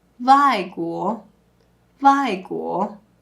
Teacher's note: U is often pronounced similar to the V sound, which uses your lower lip and upper teeth.